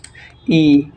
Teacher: ই উচ্চারণের সময় আমাদের জীব একটু উপরের দিকে থাকে